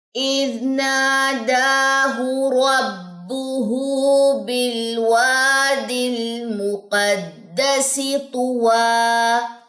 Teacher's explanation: نون کے پاس الف مد کا قاعدہ ہے کیونکہ ساتھ میں الف ہے زبر کے ساتھ، دال کے اوپر کھڑا زبر کا قاعدہ ہے، تو یہ دونوں ایک ہی مقدار کے حساب سے لمبے ہوں گے